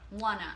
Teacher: So when I speak quickly, want to becomes wanna.